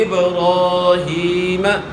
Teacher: ابراہیم، با میں قلقلہ، اس کے بعد پھر الف مد ہے اور اس کے بعد پھر یا مد ہے